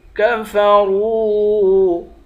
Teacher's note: ملا کر یا کو ایک الف کی مقدار کھینچیں گے، کفروا، را کو واو کے ساتھ ملا کر واو کو ایک الف کی مقدار کھینچیں گے، را کو موٹا پڑھیں گے